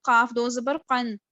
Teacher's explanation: اور قاف جو ہے وہ صرف مستعلیہ میں ہے، اس پہ اطباق کی صفت نہیں ہے